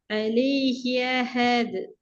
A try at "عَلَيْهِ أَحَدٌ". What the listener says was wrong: இந்த عليه أحد திருப்பி சவுண்ட் இல்லாம போகுது. عليه أحد மாறீங்க. ஒரு டோன் ஓதுற நேரம் عليه أحد நீங்க ஓதுறீங்க. அந்த அந்த عليه أحد அப்ப என்ற ஃபோர்ஸ் பண்ணி உச்சரிக்கப்படுது இல்ல. நாங்க இப்ப பக்கத்துல இப்ப தேவை அஹது என்ற அந்த அலிஃபிக்கு தானே. அஹத் என்று ஓத போக்குல வருது இல்ல.